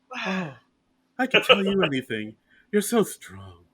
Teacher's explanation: She kind of talks in like a breathy whisper a lot.